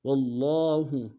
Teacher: لام کے اوپر تشدید ہے، زور دیں گے، لام کے اوپر کھڑا زبر ہے، ایک الف دال میں کھینچیں گے ، ہا کو نون سے ادا کریں گے، وَاللَّهُ بِمَا تَعْمَلُونَ،